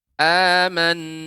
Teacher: Hamzah bertemu dengan alif yang Alif itu merupakan huruf mad jadi panjangnya dua harokat saja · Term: mad badal